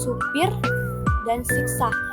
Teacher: lambang fonetis I tertutup dengan bunyi depan tinggi terbuka dan tak bulat